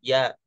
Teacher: Ketika tengah lidah bertemu dengan langit-langit keras, terjadi huruf ya.